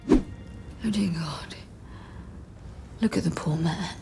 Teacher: They are all pronounced with a British pronunciation, and pay attention to how the letter R sounds, or doesn't sound in this case